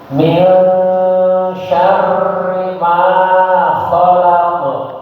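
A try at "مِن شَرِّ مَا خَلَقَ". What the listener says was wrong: ya, betul ada takrir di getaran, tapi tidak terlalu banyak, ya. Jangan syarr, biasa min syarri ma, gitu aja. Dikulangi lagi getaran ro-nya, syarri gitu aja. Min syarri ma.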